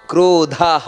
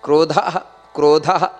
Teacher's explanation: ಆಮೇಲೆ ಕ್ರೋಧಹ ದ ಅನ್ನೋದು ಮಹಾಪ್ರಾಣ ಹ ಅನ್ನೋದು ದೀರ್ಘಾಕ್ಷರ ಕ್ರೋಧ ಕ್ರೋಧ ಅಷ್ಟೇ ಕ್ರೋಧ ಕ್ರೋಧಕೃತ್ ಕರ್ತ ನೋಡಿ ಕರ್ತ